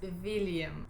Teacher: if it's a W name, we don't have that sound, we have the sound V